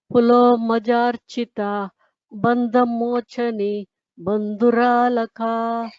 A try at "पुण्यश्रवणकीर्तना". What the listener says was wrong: Punya Shravana Kirtana. It's a Shakara. I could hear a Sakara before. And Bandha Motani Bandhuralaka. Please pay attention to the Mahapranas.